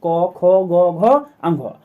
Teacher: तो कवर्ग का उच्चारण कंठ से होता है।